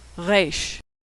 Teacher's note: Israelis pronounced it as more of a guttural sound